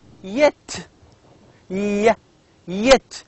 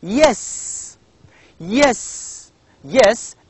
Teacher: Again, this is a voiced palatal sound.